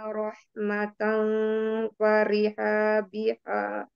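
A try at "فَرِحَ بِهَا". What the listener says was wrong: Farih biha, haknya pendek ya.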